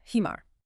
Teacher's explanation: You tense up the back of your throat and force the air out hard to create that warm mist like ha that breathy friction. · If you use the soft H, you might completely change the word you're trying to say. >> So, it's an intense breathy friction. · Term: Arabic ha